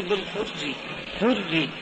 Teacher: فإن الراء الساكنة مفخمة في كلمة الحر الحر الثانية حر قد جاءت بعد في كلمة فإن الراء ساكنة مفخمة في كلمة الحر الثانية حر قد جاءت بعدها راء مكسورة ري لذا رققت الراء الساكنة إجراء لها مجرى الراء المكسورة الآتية بعدها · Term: تخلف التفخيم والترقيق